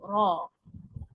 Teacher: जबान में कुछ हल्का आर्क शेप हो हल्की गोलाई हो और आवाज भारी हो र तो फिर आवाज मोटी हो जाती है और यहां बता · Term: हैवी रा